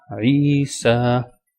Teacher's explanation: Again two sounds will be stretched. I because of ya madda and sa because of that standing sign on top of sin.